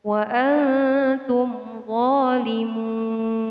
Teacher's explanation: Mun di sini dinamakan bacaan mad aridil sukun, di mana maknanya adalah mad yang bertemu sukun karena berhenti atau di akhir ayat karena berhenti dan boleh dibaca 1, 2, sampai 3 alif.